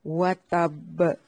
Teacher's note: با پہ شد بھی ہے اور یہ حروف قلقلہ سے بھی ہے، اس لیے اس کو خوب واضح کرنا ہے، مطلب وتب، ڈبل قلقلہ ہوگا اس پہ۔